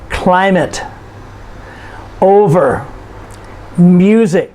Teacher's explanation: these are two syllable nouns and you notice we stress the first syllable